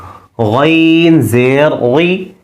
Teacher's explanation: اگلا حرف غین ہے، مخرج کے اعتبار سے حروف حلقی ہے، حلق کے شروع والا حصہ جو منہ کی طرف ہے وہاں سے اس کی آواز موٹی ہو کر آئے گی